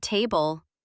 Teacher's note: For example, in the word table, we put the stress on the first syllable,